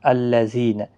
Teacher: زی یا مدہ ہے، ایک الف کی مقدار کے برابر کھینچ کر پڑھیں گے